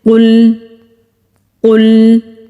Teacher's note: مستعلیہ ان حروف کو کہتے ہیں جو کہ قرآن پاک میں موٹے پڑھے جاتے ہیں، اور لام ساکن ہے۔ لام ساکن کو جب ہم ادا کریں گے تو یہ خیال کریں گے کہ یہاں پر قلقلہ نہ ہو